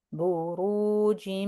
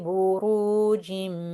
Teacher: And do ghunnah for two counts. Remember to press down for two counts.